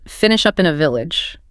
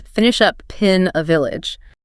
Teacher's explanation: Again, it's a complete merger. Two common words, up and in, just fuse into this totally new sound, pin.